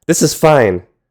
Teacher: If you sharply drop your pitch, that's an exclamation, usually conveying anger or impatience.